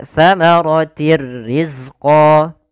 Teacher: Idgham masuk artinya memasukkan bila gunnah tanpa disertai dengan gunnah. Sehingga hanya masuk saja tanwinnya kepada huruf ra tapi tidak ditahan dengan gunnah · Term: idgham bila gunnah